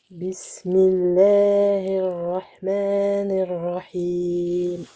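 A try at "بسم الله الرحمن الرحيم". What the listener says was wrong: Ça va, par contre, juste ici, là, il faut bien prononcer la kasra. Bismillahirra. Pas he. Hi.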